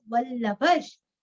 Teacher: वल्लभ, विसर्ग का उच्चारण आधा श